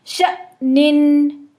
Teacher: جب حمزہ ساکن فارم میں آتا ہے تو ایک جھٹکے کے ساتھ پچھلی حرکت کو روک دیتا ہے، تو پچھلی حرکت جو ہماری شین کے پر زبر ہے وہ ایک جھٹکے کے ساتھ حمزہ پہ رک جائے گی، شأنن۔